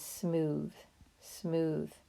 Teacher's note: that sounds like a buzzing sound that we make with our tongue when we say the th sound that's called that voiced th sound smooth it's all one syllable